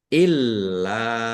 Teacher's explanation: lamnya ada tasdidnya dibaca doble ditekan dan ditahan biar tampak dobelnya · lam fathah alif mad thobi'i panjang dua harakat